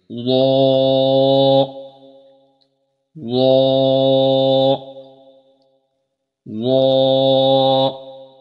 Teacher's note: ظا کو موٹا کر کے پڑھا جائے گا اور ہمیشہ یہ پر پڑھا جائے گا، اور اس کے اندر بھی سیٹی کی آواز نہیں آنی چاہیے۔